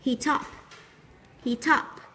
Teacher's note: heat có âm t và up, chúng ta nối âm thành heat up